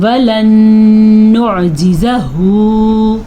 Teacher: تو یہ نون ساکن کے بعد نون آیا ہے تو یہاں پہ غنہ ہوگا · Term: ادغام بالغنہ